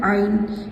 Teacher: आइन हमारा हलक से अदा होता है, दरमियानी हलक यानी बीच हलक से अदा होता है